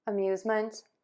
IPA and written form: əmˈjuzmənt (AMUSEMENT)